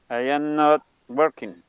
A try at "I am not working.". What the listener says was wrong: exacto.